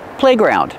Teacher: it's a compound word so we stress both syllables